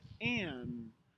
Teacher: you'll start with the AH and that's that's lower than i and you'll make the ng sound quickly really fast and then you move forward to you so and yeah so